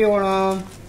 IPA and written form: oːɳɐm (Onam)